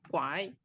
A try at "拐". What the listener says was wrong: kuai. nada 3, jadi dia karena sendiri, bacanya full ya, nada 3 ya. Kuai.